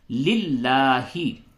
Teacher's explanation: लिल्लाहि खड़ा जबर को थोड़ा सा खींच करके पढ़ते हैं